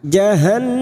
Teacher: Wahum mim sukun bertemu jim idhar safawi, dibaca jelas tanpa mendengung. Wahum jahannun yang bertasdid gunnah musaddadah, kita dengungkan selama 3 atau 2 harokat.